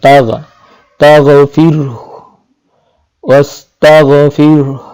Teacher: জিহ্বার একদম শেষ এবং কণ্ঠনালীর যেখান থেকে শুরু সে জায়গা থেকে তাগ উচ্চারণ হবে